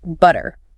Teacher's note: In British English, they tend to keep a much clearer, crisper T sound. · You hear the puff of air with the T. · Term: clear T